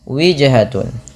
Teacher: pantulkan pada lafal huruf jim yang berharokat sukun, karena ia bacaan qalqalah. Kesalahan yang terjadi dalam baca qalqalah itu tidak mantul.